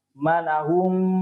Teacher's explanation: mim sukun bertemu dengan huruf mim. Idgham mimi. Dibaca dengung.